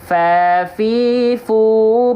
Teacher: ujung gigi seri atas kita nempel ke bibir bawah